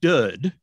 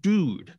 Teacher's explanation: some people have begun to pronounce that ooh sound in the middle as uh. So it might sound a little more like dud rather than dude.